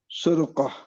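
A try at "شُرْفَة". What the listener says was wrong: Nah, bil fa, Pak. Syurfatun.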